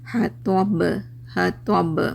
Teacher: सूरत में ये आखिरी हुरूफ क्या हो जाएगा, साकिन हो जाएगा, तो यहाँ पे आवाज़ क्या होगी आपकी, रीबाउंड होगी, क्योंकि बा हुरूफ क़लक़ला में से है